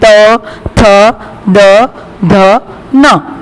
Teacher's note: हमारी जो जीभ है वो हमारे दांतों को टच करेगी, हमारे टीथ को टच करेगी।